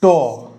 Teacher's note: মূর্ধা তালুর উপরে সামনের দিকে অর্থাৎ জীবটা উল্টে গিয়ে এখানে ধাক্কা মারছে